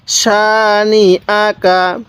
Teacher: অনেকেই আমরা এই নুনের মধ্যে টান দিয়ে থাকি, কিন্তু আমরা এই নুনের মধ্যে টান দিব না